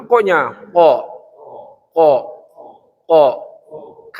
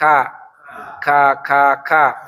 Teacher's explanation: qaf itu berada pada lidah yang paling dalam yang paling jauh di atas.